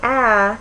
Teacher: front so it's a middle front vowel if you say ah your tongue is pretty low and still in the front